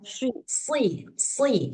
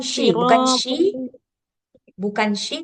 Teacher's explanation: Si dia lebih dekat ke sin lebih dekat ke sin tapi tebal.